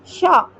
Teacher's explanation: श भी मूर्धा से ही बोला जाता है।